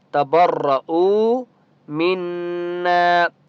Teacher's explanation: اس کو ہم نے جھٹکا نہیں دینا، تبرؤ منا نہیں پڑھنا، ٹھیک ہے؟ تبرؤ منا، نون کے اوپر تشدید ہے، غنہ کریں گے